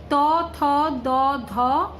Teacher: দন্ত ও জিহ্বাগ্র দন্তব্যঞ্জন। তার মানে এর উচ্চারণ স্থান হচ্ছে দন্ত ও জিহ্বাগ্র